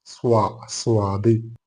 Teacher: അലപം ഇത്ബാക്കിയത്ത് അഥവാ വായ നിറച്ച് ശബ്ദം ഉച്ചരിക്കുന്ന രൂപം സ്വാദിൽ ഉണ്ട് അഥവാ നാവിന്റെ അഗ്രം രണ്ടു മുൻപല്ലിന്റെ ഇടകളിൽ വെച്ചുകൊണ്ട് കാറ്റ് പുറത്തോട്ട് തള്ളുമ്പോൾ ഉണ്ടാകുന്ന ശബ്ദമാണ് സ്വാദ് പക്ഷേ ഇവിടെയുള്ള വ്യത്യാസം എന്താവച്ചാൽ വായ നിറയെ അതിന്റെ ശബ്ദം വരും സ്വാ സ്വാദ്